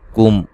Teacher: میم ساکن کا اظہار ہے، یہاں غنہ نہیں کریں گے۔ رسولم، را کو موٹا ادا کریں گے، سین کو باریک سیٹی سے ادا کریں گے۔